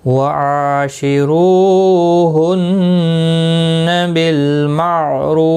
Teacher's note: ہن نون مشدد پر غنہ ہوگا، بالمعروف، معروف رو واو مدہ ہے، ایک الف کی مقدار کے برابر کھینچ کر پڑھیں گے، اور فا ساکن پڑھا جائے گا وقف کی صورت میں۔